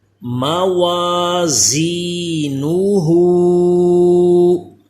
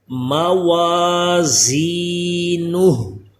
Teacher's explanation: زا پہ سیٹی پیدا ہو، تھوڑا دبا کے جیسے پڑھتے ہیں، یعنی دال سے اس کا فرق رہے